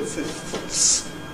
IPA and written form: fɪfθs (fifths)